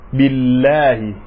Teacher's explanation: domin kisra ya zo kafin sunan Allah, da saboda haka sai zaman to siriri.